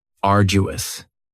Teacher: And arduous has 3 syllables. And the stress is on the first syllable. Arduous. Now, you don't hear that D sound that much.